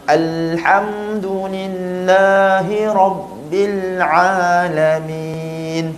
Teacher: Jadi kita buat Yang kedua, masa sebut rabbil, jangan terus rabbil rabbil lamakan sikit. Rabbil bil jelaskan lam, sempurnakan lam, baru sebut huruf selepas. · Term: alif lam qamariyah